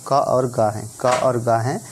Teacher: क और ग हैं, ये हमारे अल्प प्राण ध्वनियाँ